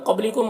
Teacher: قاف کو پر پڑھیں گے، حروف مستعلیہ میں سے ہے، با میں قلقلہ کریں گے۔ · کم کے میم میں اظہار شفوی ہو رہا ہے، اسے جلد پڑھنا ہے۔